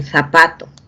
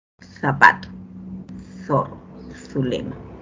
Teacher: Es interdental porque justamente el ápice de la lengua se va a ubicar entre los labios